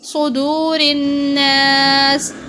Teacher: صاد کو پر پڑھیں گے، را کو باریک پڑھیں گے، اور نون پر غنہ کیا جائے گا۔